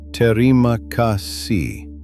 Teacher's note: Short vowels, even stress across the syllables, and a soft but real H at the end.